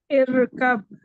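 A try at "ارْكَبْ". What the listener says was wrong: جی again ار پہ نہیں کرنا ہے, ٹھیک ہے. ار کو ار ہی پڑھیں گے. ارکب. ابھی بھی آپ کا ہلکا سا را ہل رہا ہے, ٹھیک ہے. تو ارکب.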